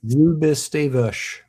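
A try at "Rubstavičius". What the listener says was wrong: I think it's got more syllables in that. I think you're leaving one out.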